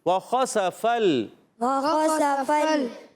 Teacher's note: اوپر والے دانتوں کے کنارے جب نیچے والے ہونٹ کے تر حصے سے لگتے ہیں تو فا ادا ہوتا ہے. فا کو لام سے ملانا ہے، لام کو ہلانا نہیں ہے، آپ نے یاد رکھنا ہے.